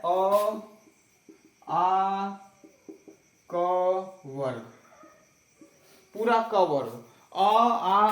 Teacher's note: अ, आ और पूरा क वर्ग का उच्चारण कंठ से ही होता है।